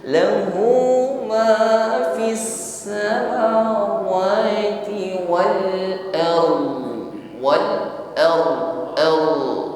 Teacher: Ra sukun sebelumnya ada fathah, berarti tafkhim, tebal. Ditutup dengan huruf dhad, ardhi, dhadnya sukun. · ditutup pada makhrajnya dhad, yaitu tepi lidah tempelkan pada gigi geraham atas.